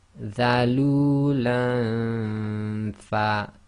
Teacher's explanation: So we have to effectively hide the noon sound because Ikhfaa is hiding. So we do the Ghunna